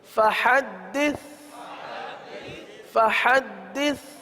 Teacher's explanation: آخر میں دیکھیے سین نہیں ہے, سا ہے. سا میں زبان کا سرا اوپر کے دانتوں کے اندرونی کنارے پر لگتے ہیں تو سا کی ادائیگی ہوتی ہے, اس میں سیٹی کی آواز نہیں آتی